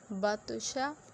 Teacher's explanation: میں نے توا کو کیوں ہلایا کہ توا جو ہے وہ ہمارا حروف قلقلہ ہے، یعنی با، توا، قاف، جیم، دال، یہ 5 ہمارے حروف قلقلہ تھے اور ان میں سے یہ توا ہے، یعنی کہ توا کے اوپر جزم یعنی کہ ساکن ہے، تو ہم اس کو ہلا کے پڑھیں گے